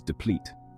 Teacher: The pronunciation is deplete with the stress on the second syllable.